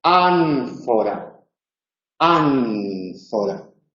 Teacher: Y esa N lleva los labios a los dientes superiores, aunque por supuesto la lengua también está en los alveolos.